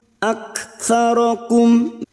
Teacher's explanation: Wa anna ak, kaf sukun yang memiliki sifat hamas dan siddah, bunyinya aktsarakum.